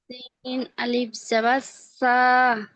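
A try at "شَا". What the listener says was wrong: শা, একালিক টানবেন না। শা। বললেন তো শা বলে টানলেন, তাহলে সার কি করে হচ্ছে।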